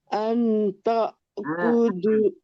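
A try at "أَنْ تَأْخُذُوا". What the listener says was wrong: ang kurang Angnya kurang lama.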